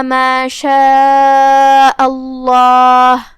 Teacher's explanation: تو اس کا حکم ہے تفخیم، مطلب ہم اسے بھاری آواز میں منہ پھلا کے پڑھیں گے کیونکہ اس سے پہلے والے حرف پہ مطلب حمزہ پہ زبر ہے، جو کہ ایک عام قاعدہ ہے کہ لفظ الجلالہ سے پہلے جو حرف ہے اس پہ زبر ہو یا پیش ہو یا لفظ الجلالہ سے آیت شروع ہوتی ہے تو ہم اسے تفخیم سے پڑھیں گے.